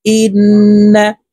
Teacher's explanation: তাসদীদওয়ালা নুনের সাথে গুন্নার সহিত পড়ব। ইন নুন জবর না, ইন্না। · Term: গুন্নাহ